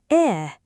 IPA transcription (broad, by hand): e